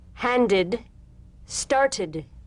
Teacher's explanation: The medial T becomes a soft D.